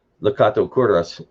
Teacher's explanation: And that apostrophe tells you where the stress is. Kato has the stress on the first syllable. Kuras has the stress on the first syllable.